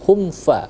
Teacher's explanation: izhar syafawi humfa jelas dengan kedua bibir yang tertutup